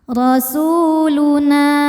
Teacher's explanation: Sebab ada waw sukun yang sebelumnya berbaris dhammah. Maka huruf sin panjang 2 harokat. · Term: mad tabi'i zahiri